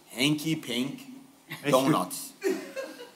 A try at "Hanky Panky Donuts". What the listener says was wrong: It's Panky, not Pank. Panky.